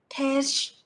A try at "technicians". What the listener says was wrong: It's tech. Like technology. From the word technology. Tech. No sh sound. Tech. No sound. Tech. Just like letter K. Tech.